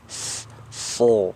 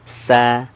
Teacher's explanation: Huruf shad, sin ini kan makhrajnya sama, tempat keluarnya sama, sama-sama ujung lidah sejajar dengan gigi seri bawah.